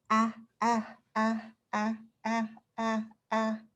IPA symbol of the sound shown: æ